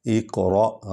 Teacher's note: ایک قاف جو ہے یہ حروف حلقی میں سے ہے۔ اقرأ، را کو پر پڑھیں گے کیونکہ اس پر زبر ہے